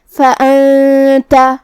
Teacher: کلمت فانت میں یہاں نون ساکن ہے، پھر حرف التا ہے، یہاں بھی حکم ہے اخفاء، ہمیں یہ حکم کو غنہ سے ادا کرنا ہے